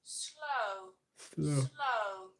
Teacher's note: with modern RP, you will hear this O being slightly differently. You'll hear it slightly more open. For example, slow >> becomes [snorts] slow.